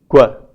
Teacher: qu, which is a labialized, voiceless, velar plosive